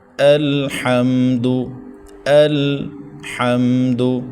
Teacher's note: ہا کو حلق کے درمیان سے ادا کرنا ہے